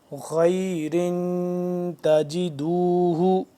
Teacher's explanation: خا یا زبر خی، خا کا موٹا پڑھیں گے، اور را دو زر رن، تنوین آ گیا تو یہاں پہ ہم اخفا کریں گے۔